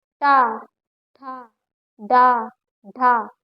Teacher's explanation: जीभ हमारी दांत के थोड़ा सा अंदर वाले स्थान पे टच करती है, इसको हम मूर्धन्य बोलते हैं।